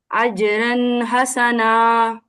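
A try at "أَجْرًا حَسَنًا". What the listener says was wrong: را کو ہیوی کر دیں. اجرن حسنا.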